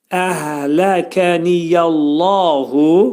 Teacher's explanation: Allah kəlməsi burada dolu oxunacaq.